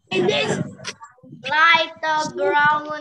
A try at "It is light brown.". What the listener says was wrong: Okay, that's right. Good job.